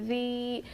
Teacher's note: یا ساکن سے پہلے زیر حرف مدہ تھوڑا کھینچ کر پڑھیں گے